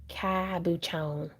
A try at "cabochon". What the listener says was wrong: I think they're trying to tell you you're putting the wrong emphasis on the wrong syllable.